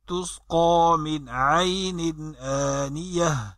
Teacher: من میں نون ساکن کے بعد عین حلقی میں سے ہے اس لیے غنہ نہیں ہوا، اور دوسرے نون میں تنوین ہے اور اس کے بعد حمزہ حلقی میں سے ہے، غنہ نہیں ہوا.